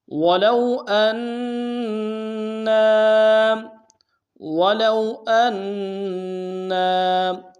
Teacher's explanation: نون کے اوپر تشدید زور دیں گے اور نون کے ساتھ الف مدہ ایک اعتدال میں کھینچیں گے